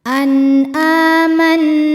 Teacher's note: Nunnya dihukumi dengan gunnah musyaddadah karena nun bertasydid. Cara bacanya dengung, bunyi n tahan sampai ada suara masuk hidung, kurang lebih 2 harokat. An amanna. Na matobi'i dhahiri karena ada alif didahului harokat fathah, maka nun panjang 2 harokat.